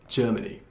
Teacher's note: 그래서 첫 음절을 강제하는 거예요